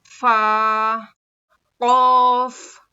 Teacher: सामने के दो दांतों के किनारे को नीचे के होठ के अंदर के हिस्से अंदर के हिस्से मतलब गीले हिस्से को लगाने से फा अदा होता है।